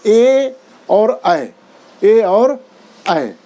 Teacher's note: कंठ तालव्य स्वर मतलब जो गले का भी प्रयोग हो और तालव्य का भी प्रयोग हो, मतलब ऊपर के तालू को भी स्पर्श करे, मुंह के ऊपर के मुंह के अंदर के उस ऊपर का जो भाग स्पर्श करता है उसको तालव्य, कंठ तालव्य स्वर बोलते हैं।